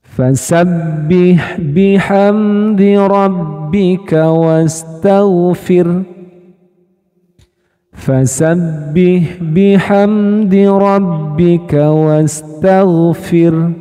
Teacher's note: ketika diwakafkan dia akan menjadi sukun dan bunyi haknya ini tidak terdengar dengan jelas. Jadi seolah-olah haknya ini hilang.